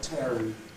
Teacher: Now again, many foreign speakers have been taught that you curl the tip of your tongue back in order to get the dark L, and you don't. What you get if you curl the tip of your tongue back is a retroflex sound